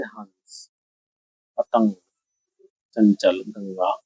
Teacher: जब हम अनुस्वार बोलेंगे तो हम उसको केवल नाक से बोलेंगे